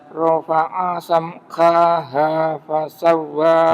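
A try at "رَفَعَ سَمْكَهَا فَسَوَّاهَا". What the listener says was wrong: Jangan panjang kannya, kannya pendek aja. Kaha langsung. Rafa'a samkaha.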